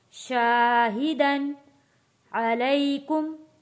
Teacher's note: यहाँ पे तनवीन पे गुन्ना अदा नहीं करेंगे, अगला लफ्ज़ हरूफे हल्की आ जाता है